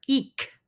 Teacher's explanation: is C just like in English c k is aspirated letter eek is aspirated not ejective